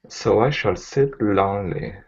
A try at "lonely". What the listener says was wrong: Instead of la, it's O. So close the vowel on that. Okay, you can't leave it open. If you leave it open, it's la.